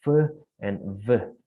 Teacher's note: if we use a lip and also the teeth, so we can produce the sound of f and v, yeah. And the sound uh, it's called labiodental, yeah. When we use the lip and also the teeth, we call the sound labiodental.